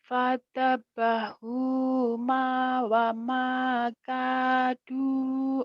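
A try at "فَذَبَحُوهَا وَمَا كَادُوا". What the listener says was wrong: Bukan pada bahu ma, pada bahu ha.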